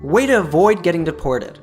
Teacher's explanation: Make sure to is properly reduced to duh here.